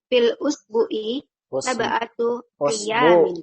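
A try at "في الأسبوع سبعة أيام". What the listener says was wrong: Usbu'i, Bu-nya panjang. Usbu'i, ulang.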